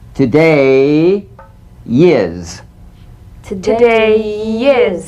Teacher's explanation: Linking words that end in the Y buzz. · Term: Y link